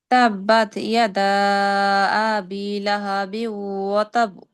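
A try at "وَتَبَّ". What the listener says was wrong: আপু কলকলা হচ্ছে না শেষে।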